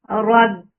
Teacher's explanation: Rabbi, ra is heavy when there is fatha dhamma on ra, it is heavy. Rab and ba is shidda letter, so the sound will cut off.